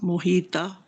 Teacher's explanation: ता मोटा भी है और लंबा भी है ता दो अलिफ के बराबर · طا موٹا محیط بھی ہے اور لمبا بھی ہے